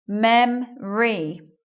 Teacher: we're not saying that o sound we're not hearing it in the word memory